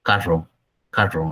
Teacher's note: la erre la pronuncia un poco como arrastrándola dice que no lo pronuncian como nosotros que la pronunciamos con una vibración sino que pues no le dan esa vibración y suena distinto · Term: arrastrándola la erre, arrastrando la R